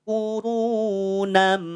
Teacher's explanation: gantikan tanwin fathahnya gantikan bunyi n-nya dengan bunyi m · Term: iqlab